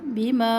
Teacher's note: یہاں پہ مد ہے مد منفصل تو اس کو 3 الف کے برابر لمبا کرے